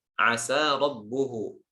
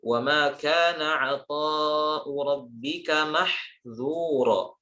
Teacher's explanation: Intinya di dua ayat ini zalnya ditipiskan dan sinnya juga ditipiskan. Kenapa? Khawatir tercampur atau terkesan seperti ayat yang lainnya, yaitu di ayat yang ini, wa ma kana 'ata'u rabbika mahdzura.